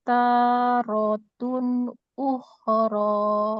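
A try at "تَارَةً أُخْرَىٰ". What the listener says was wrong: Oke. Tapi sayangnya bukan tarotun. Ayo, itu apa yuk? Tarotan.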